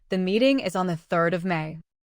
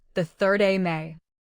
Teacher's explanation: of may shrink until it sounds like 3 May keep the whole phrase connected but do not lose the ordinal if you hear 3 May expand it mentally to 3rd of May. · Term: reduced of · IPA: /ə/